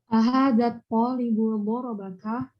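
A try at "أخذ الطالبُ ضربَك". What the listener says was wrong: Nah, ya, yang ini enggak panjang ya. Ahadzat talibu dorobaka. Yang ini normal karena bukan bertemu dengan al.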